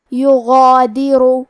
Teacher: مد الف اپنے پیچھے والے حرف کا حکم لیتا ہے تفخیم میں اور ترقیق میں، لہذا ہمیں مد الف کو بھی بھاری آواز میں پڑھنا ہے